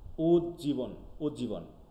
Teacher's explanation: শেষের জ আগের দকে পুরো খাইয়ে নিচ্ছে, হ্যাঁ, জ দকে খাইয়ে নিচ্ছে, এরকম সন্ধি বিচ্ছেদ আছে, রেজিমিলেশন আছে, যাক ওকে।